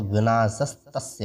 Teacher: जैसे विनाशः तस्य, इसमें विसर्ग के स्थान पर त है बाद में, तो इस विसर्ग के स्थान पर स बन जाएगा, ये बन गया, तो विनाशस्तस्य हो जाएगा।